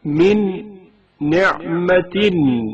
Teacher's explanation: حرف نون سے پہلے نون ساکن کا ادغام